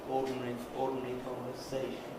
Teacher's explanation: 2 strong stresses in that phrase, and then there are the weak syllables